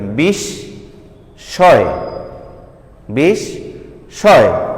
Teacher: ময়ের উচ্চারণ হলো না, কিন্তু সদ্বিত্ব হলো।